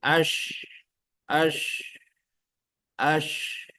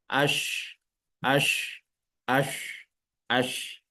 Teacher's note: Tafasyi ini maknanya menyebar apa yang menyebar udara di dalam mulut ketika mengucapkan huruf shin.